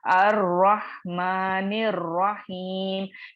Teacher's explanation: नून को डायरेक्टली मैं रॉ से मिला दी · लाम तो अंडरस्टूड है, लामुत तारीफ है, और चूंकि यहाँ पे इदगाम शमसिया हो रहा है तो ये लाम नहीं पढ़ा जाएगा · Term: रवानी में गिर जाता है